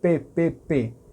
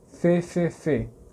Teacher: O som é próximo na forma de pronunciar, mas o F vaza.